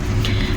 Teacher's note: نون کا غنّہ ادا کرنا ہے کیونکہ نون کے اوپر شد ہے